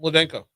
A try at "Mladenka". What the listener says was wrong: Yeah, so the L is silent. So it's Dinka. It looks like Mla.